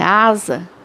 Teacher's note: escreve com S e fala com som de Z